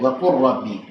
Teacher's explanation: Kecuali fi'il qul dan juga harf bal, maka idghamkanlah keduanya saat ketemu huruf ra.